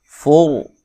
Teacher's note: रा साकिन से पहले हरफ पर ज़बरिया पेश और रा को मोटा अदा किया जाता है